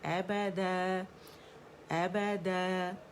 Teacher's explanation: ابدا، اور آواز اوپر جائے گی، د کر کے امالا کر کے نہیں پڑھیں گے. ابدا ابدا، آواز اوپر جانی چاہیے کیونکہ اسٹریچنگ لیٹر جو ہے الف ہے اوپر کی طرف اس کی آواز کو کھینچ رہا ہے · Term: مد عوض